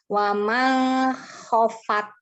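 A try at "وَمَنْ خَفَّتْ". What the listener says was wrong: Ini kan nun ketemu kho. Jadi baca N-nya sempurna. Waman sempurna. Waman gitu. Coba lagi.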